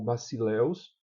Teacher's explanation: o acento é ditongo, o acento está na segunda vogal. Se o acento estivesse na primeira, seria um hiato.